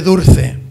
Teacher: la l se convierte en r y en vez de Dulce pues se dice dulce esto es